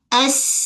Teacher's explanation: Sin ni macam bunyi desiran ular. Okey, bunyi haiwan, desiran ular.